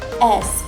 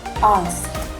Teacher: in American it sounds more like a smiley A, while in British it is more like we have to round more our mouth